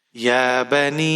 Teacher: نون کے نیچے زیر ہے، یا ساکن ہے۔ یہاں پر ہم یا مدہ کریں گے اور مد منفصل ہے، 5 حرکات تک آپ کھینچ کر پڑھیں گے۔